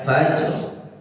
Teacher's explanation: tengah lidah kita nyentuh e langit-langit atas bagian tengah